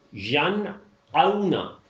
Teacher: آئین کی آواز نہیں ملانی ہے، حمزہ ہی کی رہے گی